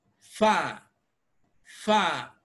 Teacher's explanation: the initial sound which is the sound of f has no noticeable vibration